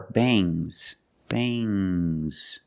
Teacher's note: When you have S after NG, it makes the nasal sound M, but it also makes a little G sound, but not a hard, strong G.